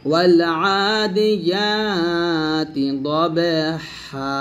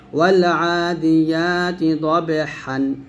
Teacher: হুকুম হচ্ছে ওয়াকফের অবস্থায় 1 আলিফ পরিমাণ টেনে পড়তে হয়, ওয়াকফ না করলে তানভিন সহ পড়তে হয়। অর্থাৎ এখানে ওয়াকফ করলেই আপনাকে টান দিতে হবে, আর ওয়াকফ না করলে তানভিনের নিয়ম অনুযায়ী পড়তে হবে।